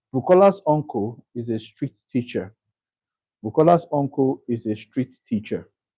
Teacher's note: So uncle is the emphasized word.